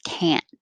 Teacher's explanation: When we use the negative, we don't pronounce the T. We just hold the tongue there. Can't. So it will sound like the positive I can, but if you hear the vowel a, it's negative.